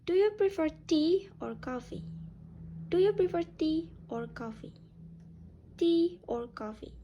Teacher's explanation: the intonation can drop on the second option. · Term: choice question